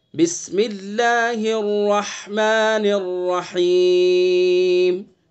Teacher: بسم اللہ الرحمن الرحیم، را کو پر کر کے پڑھیں گے، منہ بھر کے، بسم اللہ اور اس کے بعد ہا کو حلق سے ادا کریں گے، حلق کے بیچ سے